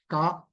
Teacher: ఈ క అనేటటువంటి ఉచ్చారణ చేయడానికి మీరు చేస్తున్న ఆభ్యంతర ప్రయత్నం ఏమిటి అంటే స్పృష్టం